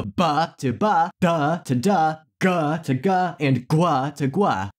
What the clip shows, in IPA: bʰ to b, dʰ to d, gʰ to g, and gʷʰ to gʷ